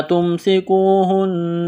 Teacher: ہا کو نون کے ساتھ ملائیں گے، تشدید کی وجہ سے نون مشدد پر غنہ کریں گے، آواز ناک میں چھپائیں گے